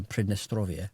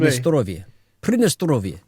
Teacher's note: saying that with like a slightly rolled R